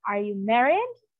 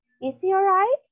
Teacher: From normal tone, it will rise and it will not drop down. It will remain rising intonation, okay?